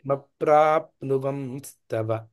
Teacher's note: వం అని మకారం వస్తుందా నకారం వస్తుంది అది నకా పదచ్చేదంలో నకారం ఉంటుంది కలిపి చెప్పేస్తున్నప్పుడు మకారం వచ్చేస్తుంది నోరు మూసేసి అంటే పెదాలు కలిపి చెప్పేస్తాం